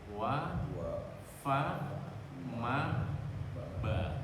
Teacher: Ini posisinya sama, huruf syafatani yang keluarnya di antara dari dua bibir kita. Cuman yang membedakan adalah kalau wa ini bibir kita tidak bersentuhan terbuka, wa.